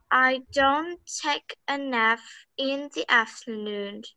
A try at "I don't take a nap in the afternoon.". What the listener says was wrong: Nap, the end of the word is P. Nap, nap, nap. I don't take a nap in the afternoon.